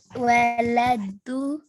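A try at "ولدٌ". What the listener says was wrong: Wala, du, don. Because alif lam is not here. जब अलिफ लाम नहीं होगा तो दुन होगा, ठीक है?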